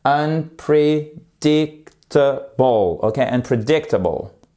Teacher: Ça veut dire qu'on appuie un petit peu, là on prend une impulsion de départ, unpredictable, et pour bien asséner, si je puis dire, notre accent tonique sur ici la troisième syllabe, puisque ce mot en comporte 5.